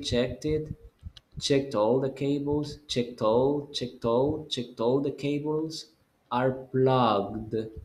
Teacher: So link the T sound with the next word next to it because you have a vowel.